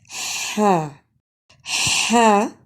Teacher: हा वस्ते हलक से अदा होता है वस्ते हलक से मुराद हलक का दरमियानी हिस्सा · ہا وسط حلق سے ادا ہوتا ہے۔ وسط حلق سے مراد حلق کا درمیانی حصہ۔